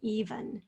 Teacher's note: the second syllable is a schwa spelled with an e